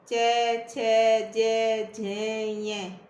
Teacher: हमारी जीवा है वो तालू के स्पर्श कर रही है